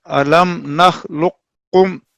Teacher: قاف اور کاف کا مخرج ساتھ ساتھ ہے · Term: ادغام متقاربین